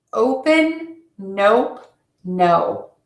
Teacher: for the long o you are going to open your mouth and then move to rounded lips